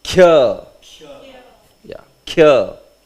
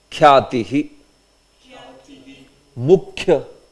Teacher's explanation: You will say ya very clearly, but the kha, khakara will be pronounced short.